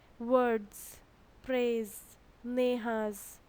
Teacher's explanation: the s sounds like z there is a buzzing sound